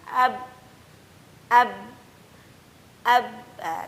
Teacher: Ketika huruf ba dalam kondisi sukun, maka di situ adalah penekanan yang sangat jelas. Maka di situ terdengar suara yang ditahan.